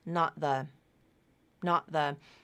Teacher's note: Typically that T in not is going to be a glottal stop T,